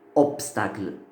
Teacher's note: On a obtenu le P, obstacle. Et le P, c'est une consonne sourde, non voisée.